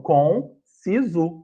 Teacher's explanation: ele é um som nasal, então ele tá assim, contínuo, para a gente saber que a pronúncia tem que ser nasal, então conciso. · no final termina com U, não termina com O, diferente da escrita